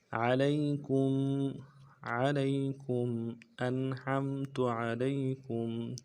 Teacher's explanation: انعمت علیکم عین کو موٹا ادا کرنا ہے، لام کو یا کے ساتھ ملانا ہے، یا لین ہے، بغیر کھینچے پڑیں گے، کاف کو میم کے ساتھ ملانا ہے، میم ساکن غنہ کریں گے